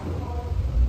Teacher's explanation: P and B are bilabial stops. Bilabial stops, where the air is blocked by both lips